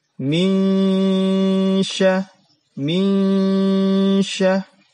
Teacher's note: menyamarkan bunyi nun mati ya menyamarkan bunyi nun mati dan menuju huruf setelah nun mati tersebut dan disertai dengan dengung atau ditahan selama dua harokat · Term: ikhfa